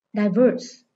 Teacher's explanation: đây là động từ có hai âm tiết, nên trọng âm dưới âm số 2.